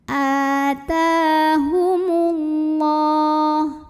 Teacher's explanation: lam pada lafaz Allah atau lam jalalah dibunyikan secara tafkhim, sebabnya karena huruf sebelumnya mim barisnya dhammah, maka dibaca tebal lamnya Allah.